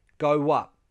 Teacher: We link go and up with a w sound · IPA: /w/